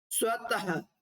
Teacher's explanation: अगर हम इसका उच्चारण करते हैं तो इसमें कंपन नहीं होगी। कैसा? घर्षण नहीं होगा। · तो यहाँ पे विसर्ग जो है आहा की आवाज निकालता है · विसर्ग का उच्चारण अघोष होता है।